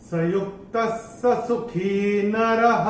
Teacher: तो ये जो र के ऊपर के बाद जो विसर्ग आ रहा है, चरण की समाप्ति पे आ रहा है, तो इसका उच्चारण केवल और केवल ह ही होगा